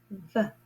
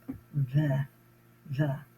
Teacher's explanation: Notice again my teeth at the top, my top teeth are on my bottom lip.